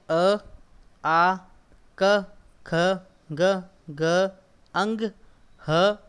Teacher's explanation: तो बच्चों आप अभी घर पे बैठे बैठे ही आप एक बार काम कीजिए, आप अ बोलिए और अपने कंठ के ऊपर हाथ रखिए, तो आपको ऐसा लगेगा कि अ जो है वो आप अपने कंठ से बोल रहे हो। तो इसकी ध्वनि जो है, इसका उत्पत्ति स्थान है वो कंठ है। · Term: कंठ्य वर्ण